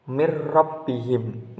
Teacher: Kemudian pada lafaz setelah hudam min, di situ ada lafaz mir rabbihim, yakni ada hukum bacaan yang disebut dengan idgham bila gunnah, yang disebabkan adanya nun sukun bertemu dengan huruf ra, dan cara membacanya masuk dengan tidak mendengung.